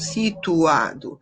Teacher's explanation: O tu ficou separado do a pela mesma razão.